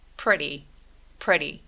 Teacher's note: 첫 번째 음절에 강세 줘볼게요.